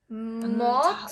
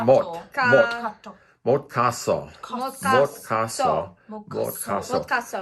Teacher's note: At the end of a syllable, S becomes T, so it's mot.